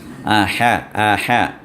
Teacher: وسط حلق سے ہا کو نکالنا ہے